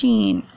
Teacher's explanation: زبان کے بیچ اور تالو کے بیچ سے ادا ہوتا ہے. زبان کے درمیان کو تالو کے درمیان سے جب ٹچ کرتے ہیں تو ادا ہوتا ہے شین